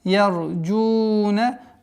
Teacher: Долгота в размере двух огласовок даммы.